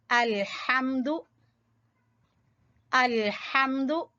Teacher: हा को वस्ते हलक से निकालेंगे